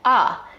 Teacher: Another feature that we see in DC, similar to New York, is the raised thought cloth vowel